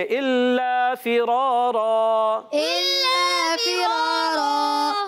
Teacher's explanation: را علی زبر را، را بھی موٹا رہے گا کیونکہ زبر آ گیا · پر 2 زبر کی تنوین کو وقف میں کیا کریں گے؟ الف سے بدل دیں گے، الف سے بدل دیں گے، الا فرارا، الا فرارا، اس کو کہتے ہیں وقف بالابدال، مال الف، وقف بالابدال، مال الف، ماشاءاللہ یاد ہو گیا ہے، گڈ۔